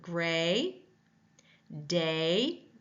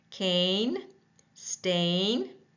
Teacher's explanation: Tongue is mid-front and the mouth is tense. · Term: long A sound